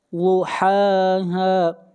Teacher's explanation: ضاد کو موٹا پڑھیں گے، ضاد حروف مستعلیہ میں سے ہے